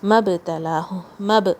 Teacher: میم با سے جوائن ہوگا، حمزۃ الوصل کو نہیں پڑھنا ہے، با پہ قلقلہ. مَبْتَلَاهُ، مَبْتَلَاهُ، تا لائٹ یہاں پہ.